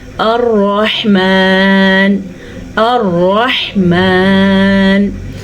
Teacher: इस रा पे ज़बर हमें रब्बी। अब इस रा पे शद भी है और ज़बर भी है तो रा पुर पढ़ेंगे